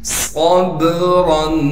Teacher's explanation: सब्रन, साद को मोटा करके पढ़ेंगे और साद को आगे बा साकिन से मिला देंगे। बा हरूफ कलकला में से होने की वजह से बा पर थोड़ी सी आवाज़ को हिलाएंगे। रा को मोटा करके पढ़ेंगे और रा पर इख्फा यानी गुन्ना किया जाएगा।